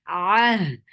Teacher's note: ain from your throat, squeeze your throat well